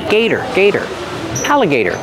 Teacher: The T is a fast D.